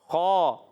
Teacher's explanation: خا حلق کے اوپر والے حصے سے ادا ہوتا ہے